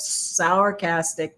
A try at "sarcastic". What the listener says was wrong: Sourcastic? Oh, sound like you said sour.